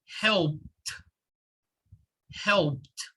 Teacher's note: instead of saying help it the ed will sound like a t